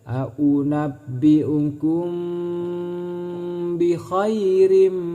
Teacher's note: mim mati bertemu dengan huruf ba, maka ini disebut ikhfa syafawi. Cara membaca ikhfa syafawi yaitu dengan cara masuk berdengung.